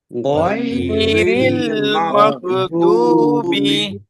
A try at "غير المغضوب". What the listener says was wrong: মাগ না, এই যে আমি প্রথমেই বলেছিলাম যে গয়ের উচ্চারণ করার সময় মুখ কি হয়ে যাবে? হালকা করে, হালকা। গয়রিল মাগ মাগ না।